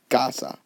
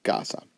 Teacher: when you pronounce the word casa, you say casa. Your voice naturally goes up on the A, casa. So again, there is no accent needed. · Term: natural stress